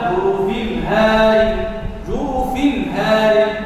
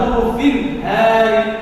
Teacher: dia dibaca izhar, jelas, tidak ada gunnah, tidak ada tasydidnya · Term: izhar halqi